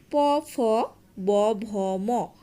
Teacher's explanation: এই 5টি ধ্বনি ঠোঁট বা ওষ্ঠ কে স্পর্শ করে, এই কারণে এর নামকরণ করা হয়েছে ওষ্ঠধ্বনি